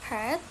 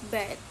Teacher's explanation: P is a voiceless bilabial plosive. B is a voiced bilabial plosive.